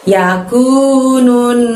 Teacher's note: nun tasydid. Maka harus ditahan selama 2 harokat ya.